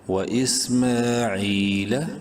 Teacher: عین یا زیر عی، عین کو یا مدہ کی وجہ سے ایک الف برابر لمبا کریں گے